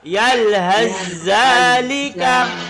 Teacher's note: langsung sa hilang, langsung masuk ke za. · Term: idgham mutajanisain